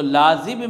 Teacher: لازب میں جو ہے با کے اوپر جو حرکت کی بو آئے گی وہ کسرہ کے مشابہ ہوگی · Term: قلقلہ